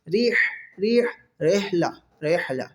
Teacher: ہا حلق کے درمیان والے حصے سے جہاں سے عین ادا ہوتا ہے وہاں سے یہ ہا ادا ہوتا ہے